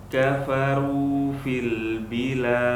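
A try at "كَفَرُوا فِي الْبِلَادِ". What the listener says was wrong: Qalqalahnya tidak benar. Bilad. Lade. Ade. Jangan de. De.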